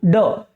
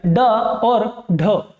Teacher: ड, जीभ पलटी और झटके से छूटी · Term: उत्क्षिप्त व्यंजन